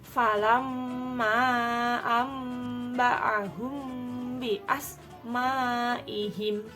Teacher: Di situ ada mim sukun bertemu dengan huruf ba. Nah, bertemu dengan huruf ba ini maka disebut dengan ikhfa syafawi. Cara membacanya mendengung ditekan 2 harokat.